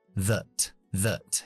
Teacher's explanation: Siguiente palabra es that, pronombre relativo que podemos dejarlo en su forma débil, que sería cambiando la A por una schwa. That. Y esa T la voy a dejar en parada glotal porque viene una G después.